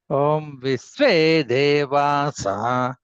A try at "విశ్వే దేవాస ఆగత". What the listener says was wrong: అక్కడ విశ్వే దేవాస అంటే దీర్ఘం చెప్పవకండి. విశ్వే దేవాస ఆగత అక్కడ చెప్పండి. విశ్వే దేవాస ఆగత